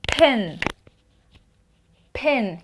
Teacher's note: you will feel the air but no vibration